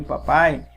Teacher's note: o pai no final tem a sílaba mais forte. Neste caso, por eles serem a última sílaba, essas palavras são chamadas de oxítona, tá bom?